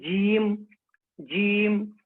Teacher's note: زبان کا بیچ اور اس کے مقابل اوپر کا تالو. جیسے ہم پڑھیں گے جیم، جیم والسماء ذات البروج، والسماء ذات البروج.